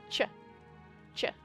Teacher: So the stop t and the fricative sh, or the stop t, I should say, together make the sound ch, ch, which in English we represent with ch, or in my English we represent as ch. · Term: affricates